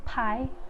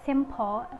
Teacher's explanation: P is voiceless bilabial stop